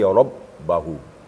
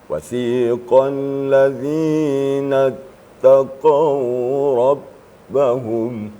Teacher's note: Ba itu sifatnya adalah syiddah. Syiddah itu suara terputus waktu membacanya. Tertahan ya.